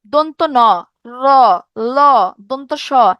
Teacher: জিভের ডগাটা কি করতেছে, উপরের পাটির দাঁতের একদম গোড়ার সাথে লেগে বায়ুপথে একটা বাধা সৃষ্টি করতেছে। এগুলো হচ্ছে দন্তমূলীয় ব্যঞ্জন।